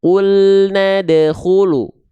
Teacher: Nah, ini yang disebut dengan qalqalah sugro. Pantulannya ringan.